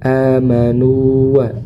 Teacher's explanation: kita harus menyempurnakan huruf madnya, kemudian masuk ke huruf waw tanpa ditasydidkan.